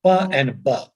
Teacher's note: two sounds from the same place of articulation, like let's say lips